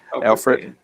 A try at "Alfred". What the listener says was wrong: It's not the E word, it's the L word, Alfred. The E is silent.